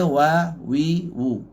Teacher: Wa ni jaga nipis. Tapi kena muncung. Jangan buat wah. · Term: huruf waw